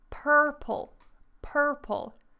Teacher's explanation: that's because I'm not American so we don't pronounce the r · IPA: /ˈpɜːpəl/